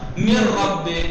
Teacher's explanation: اب نون تو آواز آئی نہیں، ادغام کامل ہوگا یہاں